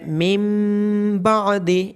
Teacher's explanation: اس کے بعد آخری لائن میں ہے من بعد، یہاں پہ اقلاب ہو رہا ہے، یہاں پہ نون ساکن کی آواز میم میں بدل رہی ہے۔ اقلاب کا مطلب کنورٹ ہو رہی ہے آواز نون ساکن کی مین میں، من بعد، تو جب بھی نون ساکن کے بعد یا تنوین کے بعد با آئے گا تو آواز کنورٹ ہو کے میم میں بدل جائے گی۔